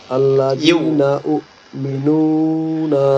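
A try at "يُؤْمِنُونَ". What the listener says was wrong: উ হবে না ইয়া ইয়া হামজা পেশ ইউ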